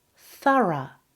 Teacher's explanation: The stress is on the first syllable and the first O becomes a, th.